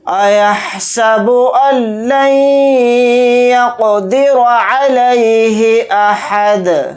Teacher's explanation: حالت وقف میں دال کو ساکن بنا کر پڑھیں گے یعنی دال پر جزم لگا کر پڑھیں گے